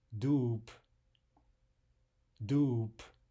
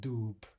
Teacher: There the final B is devoiced to a P